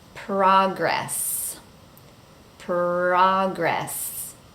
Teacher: make sure you say the p clearly and then the r without rolling the r